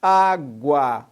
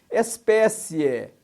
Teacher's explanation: O ditongo, repetindo, são aquelas palavras que têm 2 sons vocálicos numa mesma sílaba, ou seja, uma vogal e uma semivogal